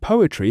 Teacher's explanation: the word poetry has three syllables. The first syllable is stressed. The second and third are unstressed.